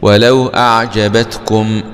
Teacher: ميم سكون مع الإظهار الشفوي لأن جاء بعدها حرف واو